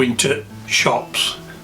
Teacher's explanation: The word the has been replaced with a guttural stop.